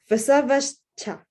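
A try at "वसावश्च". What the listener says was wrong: It's coming out very slightly as a s rather than a sh. Vasavascha.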